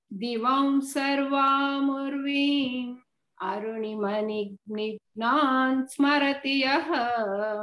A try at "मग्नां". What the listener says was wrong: मग्नां नॉट मिग्ना मग्नां स्मरति यः नॉट मिग्ना मग्ना hold on दिवं सर्वामूर्वी वेन अरुणिमणिमग्नां स्मरति यः